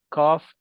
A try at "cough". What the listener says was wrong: Okay, so see, at the end, it's an F. Cough. Cough. Cough. It has an F.